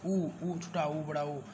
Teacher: जब ऊ बोलोगे तो आपके होंठ गोल होंगे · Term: ओष्ठ